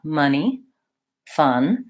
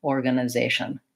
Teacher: the only difference between the schwa in fun and organization is that fun, the schwa is held for longer. So organization, I'm just really touching on those schwas quickly and lightly, organization.